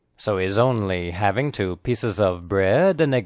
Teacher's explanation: The important content words are only and having. The unstressed words are so and he's. The H in he is not pronounced.